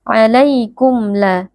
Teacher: Di sini ada mim sukun berjumpa dengan huruf lam cara membacanya mim sukun dibaca dengan jelas tanpa berdengung karena ini merupakan bacaan izhar syafawiin haadi karena ada Alif sebelumnya